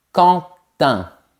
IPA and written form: kɑ̃tɛ̃ (Quentin)